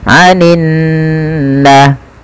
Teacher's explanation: kita baca dengan menahan suara nunnya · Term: gunnah